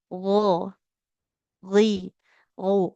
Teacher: Yang pertama kita perhatikan dulu makhraj dari hurufnya. Huruf ghain itu letaknya ada di tenggorokan ujung. Jadi tenggorokan paling bagian paling luar, tenggorokan paling atas.